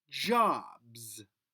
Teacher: S at the end of jobs makes that z sound you can even feel the vibration on your tongue